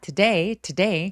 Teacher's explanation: 강세는 day에 오기 때문에 항상 to를 너무 강조주 하시면 안 됩니다. Today가 아니라 today 그래서 힘을 좀 빼고 시작해 보세요.